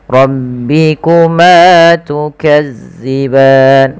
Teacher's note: tebalkan karena dia Ro tafkhim adanya huruf ro yang berharakat fathah